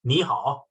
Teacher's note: it's kind of falling tone when you indicate that get get away or get out of my way kind of thing